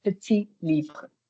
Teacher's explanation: I don't pronounce the last T.